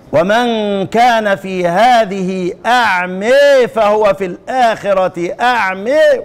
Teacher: تقريب الالف من الياء والفتحة من الكسرة